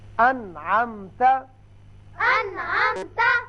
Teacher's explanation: انعمت، اب نون ساکن کے بعد عین آ گیا، نون پر ہم نے اظہار کیا، نون کو ظاہر کر کے پڑھا